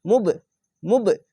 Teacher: কলকলা ধাক্কা মেরে নিচের দিকে সাউন্ড আসবে